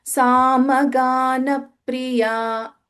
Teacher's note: so that pa is getting a dvitvam doubling